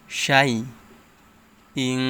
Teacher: ইকফা গুন্না, ইকফা অর্থ গোপন করিয়া পড়া। তানবিনের পরে ইকফার হরফ কফ আসছে, তাই গুন্নাহর সহিত গোপন করে পড়তে হবে।